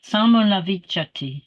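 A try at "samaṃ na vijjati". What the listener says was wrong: Samanavijati, you said. You shorten that. Samanavijati.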